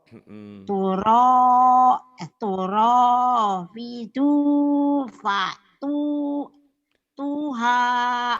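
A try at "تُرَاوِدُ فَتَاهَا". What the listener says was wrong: Bukan patu, ini kan barisnya di atas. Patah.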